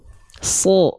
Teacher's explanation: Ketika shad dia berharokat fathah karena dia huruf tebal, bunyi vokalnya adalah bunyi vokal O.